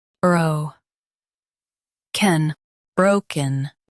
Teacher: Emphasize bro and soften ken.